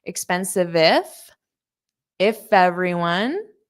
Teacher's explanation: So I might hear a little bit of that F sound on everyone.